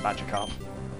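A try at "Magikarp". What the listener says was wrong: Did you just say Badger Carp? Get your consonants right!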